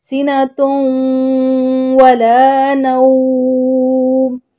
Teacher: اب تنوین کو واو کے ساتھ ملانا ہے